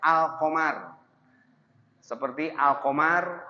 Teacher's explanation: qamar bulan alif lam qamariyah terlihat lamnya